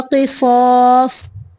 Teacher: قاف کو موٹا پڑھنا ہے، صاد کو موٹا